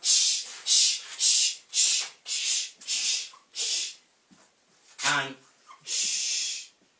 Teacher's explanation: There is a sudden release of air plus gradual release of air in the course of pronouncing the affricate sound.